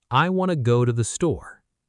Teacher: The words want and to merge together into one sound, wanna. The word the becomes tiny, almost invisible. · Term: connected speech